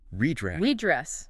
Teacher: red dress becomes almost one word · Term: linking